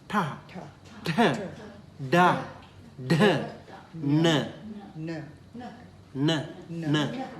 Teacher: Tongue curling backward and tapping uh the upper pallet